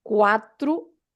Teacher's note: The O at the end. Always the sound U, like a double O in English